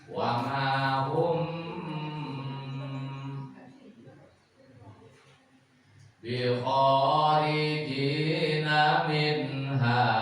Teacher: Setiap mim mati ketemu huruf ba, nah dibacanya jangan langsung tapi ditahan. Wa ma hum bi kharijina minha haknya asli. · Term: ikhfa sapawi